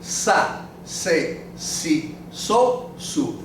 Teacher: we don't have a z we don't buzz our Z's at all